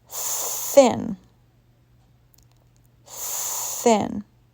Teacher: Only air is coming out, so this TH is voiceless.